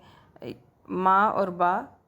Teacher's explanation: ما اور با، ٹھیک ہے، ہونٹوں سے ادا ہوتے ہیں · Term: حروف شفوی